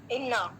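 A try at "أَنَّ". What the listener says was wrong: अन्ना अन्ना है यहाँ पे, ठीक है। इन्ना नहीं है, अन्ना है।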